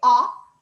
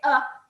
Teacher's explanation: when you say ah your mouth is open when you say uh it's hardly open